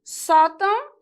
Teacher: a sílaba tônica desta palavra recai na penúltima sílaba, portanto, é uma paroxítona